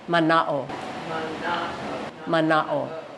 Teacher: There is an okina. So it just means that you have to separate the A and the O, but the A is the accent.